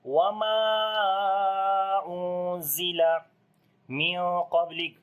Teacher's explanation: we read ikhfa in heavy sound because of heavy letter after the noon sakin, which is qaf here